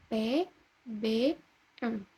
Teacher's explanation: konsonan yang dihasilkan dengan mempertemukan kedua belah bibir yang bersama-sama bertindak sebagai artikulator dan titik artikulasi. Bunyi yang dihasilkan ialah P, B, dan M. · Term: konsonan bilabial